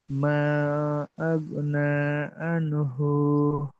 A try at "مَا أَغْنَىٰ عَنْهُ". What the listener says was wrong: হু টান হচ্ছে কেন? হু টান নেই তো, হু তো টান নেই, আনহু তো টান নেই।